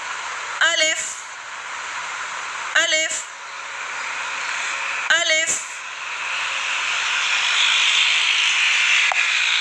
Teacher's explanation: अलिफ अदा होता है मुंह के खाली हिस्से से